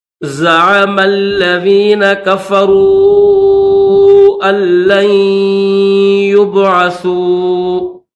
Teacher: سا کو نون کے ساتھ ملائیں گے اور نون کے اوپر تشدید ہے تو غنہ کیا جائے گا